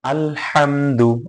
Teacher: মিম সাকিনের পরে যদি দাল আসে তাহলে ইজহার করে স্পষ্ট করে পড়তে হবে